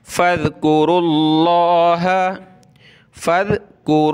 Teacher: अल्लाह से। देखें लफ्ज़ अल्लाह से पहले वाला वर्ड है रा, इस पर पेश है, तो लफ्ज़ अल्लाह को मोटा करके पढ़ेंगे।